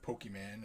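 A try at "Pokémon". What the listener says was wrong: It's pronounced Pokemon, not man. Man is totally different.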